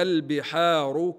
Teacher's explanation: اللام هنا لابد من بيانها واظهارها لانها ساكنه